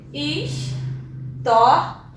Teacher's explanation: Eu tenho uma paroxítona, já que o tó é o mais forte, né? Então eu tenho o tó, que é o mais forte, uma paroxítona, só que é uma paroxítona terminada em A.